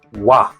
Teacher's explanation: it's oo plus ah. So start with lips round. We glide quickly into a oo.